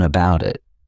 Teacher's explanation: I'll actually use a soft D sound, and you'll hear that sound on both sides of the word.